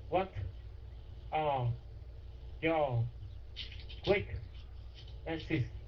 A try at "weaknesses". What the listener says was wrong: Yeah, weaknesses.